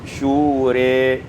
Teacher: Pada ayat yang ke-38, syura, imalatu fathatir ra wal alif, dengan imalah fathah ra dan alif menjadi syure.